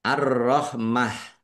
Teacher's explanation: Arrahmah alif lam syamsiyah karena tidak dibaca langsung masuk ke huruf berikutnya yaitu ro ditandai rnya ada tasdidnya rnya dibaca dobel. Kemudian ta marbutah karena waqaf dibaca ha sukun arrahmah dan dibaca pendek karena tidak ada tanda panjangnya.